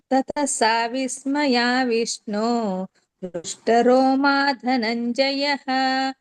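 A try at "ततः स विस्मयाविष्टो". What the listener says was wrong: ವಿಸ್ಮಯ ವಿಷ್ಣೋ ವಿಷ್ಣು ಅಲ್ಲ ವಿಷ್ಣೋ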